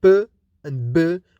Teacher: For p and b, we stop the air completely using the lips. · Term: plosives